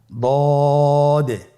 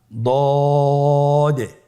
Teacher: আলহামদুলিল্লাহ, দদ হরফটিও মোটা হরফ, মোটা করে উচ্চারণ করতে হবে। দদের মাখরাজ জিহ্বার গোড়ার কিনারা সামনের উপরের 2 দাঁতের গোড়ার সঙ্গে লাগিয়ে উচ্চারিত হয়।